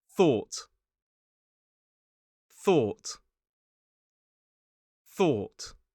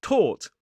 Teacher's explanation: So remember to make this sound, tip of the tongue on the top teeth, blow air, and don't use your vocal cords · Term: voiceless th sound